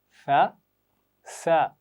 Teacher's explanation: सा की आवाज़ बगैर सीटी के पढ़नी है और सीन की आवाज़ में सीटी होती है